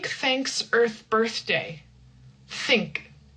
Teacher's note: We have think, no vocal cords, no voice. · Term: unvoiced th